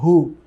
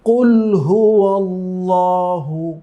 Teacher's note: হা একটু গাম্ভীর্যের সাথে উচ্চারণ করতে হয় একটু প্রেসার দিয়ে কন্ঠে উচ্চারণ করতে হয়